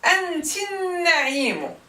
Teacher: We don't hear the Fatha nor the Lam with Sukun at all.